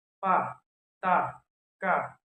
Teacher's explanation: Ba, da, ga, za, sa, ja, ja do not exist in the final position of the word of Indonesia. Phonemic features pa, ta, ka are never aspirated in Indonesian words wherever they occur.